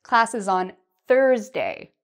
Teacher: notice Thursday was louder and the reason is because that's the important thing I'm checking